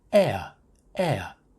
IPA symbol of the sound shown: eə